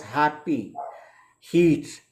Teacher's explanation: The glottis, as much as we might not realize, it is used for H sound in English. Just to pronounce the words happy, heat, and notice how far down the throat these sounds come from. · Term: Glottal